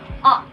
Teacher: It is an open front vowel sound.